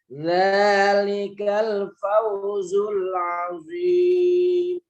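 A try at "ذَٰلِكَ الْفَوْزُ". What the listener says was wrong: Jangan sekedar pau tapi fau. Zalikal fau.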